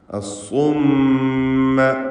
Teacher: ഷദ്ദ് നൽകപ്പെട്ട മീം 2 ഹറക്കത്തിൻ്റെ അളവിൽ മണിച്ചുച്ചരിക്കുക. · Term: മീം മുശദ്ദദ